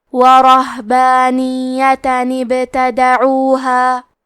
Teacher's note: ہم تا کے تنوین کو جو کہ نون ساکن ہے اسے زیر سے پڑھ کے کلمت ابتدعوها کو پڑھیں گے۔ وَرَهْبَانِيَّةً ابْتَدَعُوهَا، کلمت ابتدعوها میں حرف البا پہ جزم ہے تو ہمیں با کو قلقلہ سے پڑھنا ہے، تا پہ اور دال پہ زبر ہے تو ہم یہ دونوں زبر کو ظاہر کریں گے۔